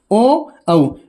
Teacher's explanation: वे स्वर वर्ण जिनके उच्चारण में होठ अर्धगोलाकार, अर्धवर्ताकार हो जाते हैं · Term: अर्धवर्ताकार स्वर